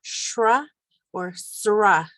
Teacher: We have SR, which either makes a shra or sra sound, depending on dialect again.